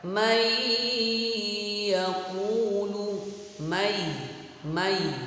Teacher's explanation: Jadi adik-adik kalau menemukan nun sukun atau tanwin, baik itu fathatain, kasrotain, dhammatain, bertemu dengan salah satu huruf ya, nun, mim, waw, cara membacanya dibaca mendengung, dimasukkan, ditahan selama 2 ketukan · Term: idgham bi gunnah